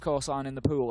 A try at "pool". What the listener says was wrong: The pool. You say it like it's spelled P-E-W-L. The rest of us say P-O-O-L. Pool. Pool. Pool. I'm not saying pull, I'm saying pool.